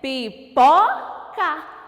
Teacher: A sílaba pó, eu ponho mais força para falar. Eu ponho mais intensidade nessa sílaba. E ela é a sílaba tônica da palavra pipoca.